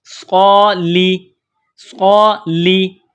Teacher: ایک ہوتی ہے سین اور ایک ہوتا ہے صاد، تو دونوں میں سیٹی کی آواز پیدا کی جاتی ہے. صاد کو موٹا پڑھا جاتا ہے اور سین کو باریک پڑھا جاتا ہے. تو یہاں صاد ہے، صاد کو موٹا پڑھیں گے.